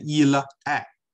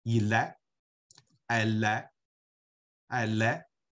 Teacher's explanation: il▁est▁那个▁l▁和▁a▁辅音和元音连起来念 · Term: 连诵